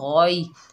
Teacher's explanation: इस याए लीन को नरमी और जल्दी से अदा करेंगे। बाज़ लोग पढ़ते हैं गौए बस समावाते, तो ये क्या होता है, मजहूल हो जाता है, गौई गौई। · गौइन के ऊपर ज़बर है, आगे या साकिन है, देखिए ये या कौन सी है, याए लीन, इसको नरमी और जल्दी से अदा करेंगे। गौई, जो गौइन है वो हुर्फ़े मुस्ताला में से, इसको मोटा पढ़ेंगे और इस याए लीन को नरमी और जल्दी से अदा करेंगे।